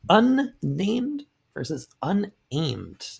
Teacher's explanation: doubled consonants, both consonant is pronounced, and this is uncommon in English